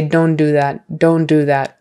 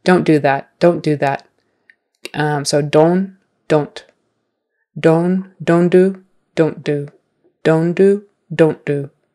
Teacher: that T is there in don't, it's just very slight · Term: slight T